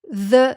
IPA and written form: ðə (the)